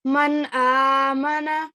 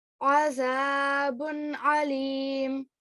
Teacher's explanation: these throat letters, al-huruf al-halaqi, they have no effect on the sound. They're just read clearly without ghunna.